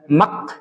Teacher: Huruf kaf dia punya hamas, punya keluar udara. Tapi dia itu syiddah